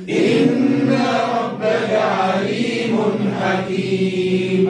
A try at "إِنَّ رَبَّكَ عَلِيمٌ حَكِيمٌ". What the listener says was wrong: راهو الراء أقوى من النون، خاطر الراء مفخمة، مش إن ربك. إن راء، إن ربك عليم حكيم.